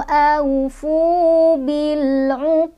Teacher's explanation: Qaqalah besar, dalnya sukunnya karena berhenti ya, pantulannya besar.